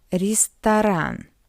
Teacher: O is unstressed as well. That's why we pronounce it as a.